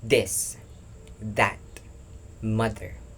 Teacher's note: Exact same position as theta. The manner of articulation is a voiced dental fricative hard sound. Push air push air through the teeth and mouth to create friction sound.